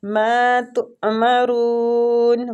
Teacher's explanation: ماں کو کھینچیں گے الف مد کی وجہ سے، تؤمرون حمزہ پہ جھٹکا دیں گے، رون را کو پور پڑیں گے پیش کی وجہ سے، مد عارض لیے سکون کریں گے ادھر۔